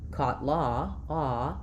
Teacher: When I'm saying ah, like in caught law, ah, my mouth is still pretty open, my tongue is still pretty far down, but my lips are a little bit rounded, which means that it's going to close my jaw a little bit.